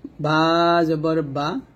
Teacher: বাটা হল দুই ঠোট মিল করে আমরা উচ্চারণ করব।